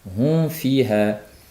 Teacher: Hum deb mimga labimiz qaytib olib keyin fni talaffuz qilishligi kerak.